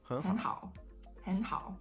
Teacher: If you put them together, the first tone 3 turns into tone 2. So hen becomes hen, and then you have hao, which stays the same. · However, and this is something that Chinese linguists have learned through research, and I've also seen it in my research, when you have two tone 3s together, the first tone 3 that turns into tone 2 is not a full tone 2. It's actually a half of a tone 2.